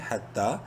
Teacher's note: تا ایک الف کے برابر لمبا کریں گے تا کو کھڑی زبر کی وجہ سے